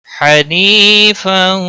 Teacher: حنی یا مدہ ہے ایک الف کے برابر کھینچ کر پڑھیں گے۔